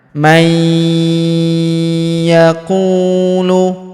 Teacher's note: dengan dengung ya, kita tahan dan tekan serta dengung 2-3 harokat. May yaqulu faminan nasi man yaqulu, huruf ku kita panjangkan 2 harokat karena waw sukun di depannya.